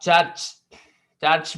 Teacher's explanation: the word church begins and ends with the palatal sound ch. अब चर्च, चर्च में दोनों palatal sounds हैं यहाँ पर.